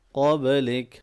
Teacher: قاف موٹا پڑھیں گے، با پہ قلقلہ ہوگا،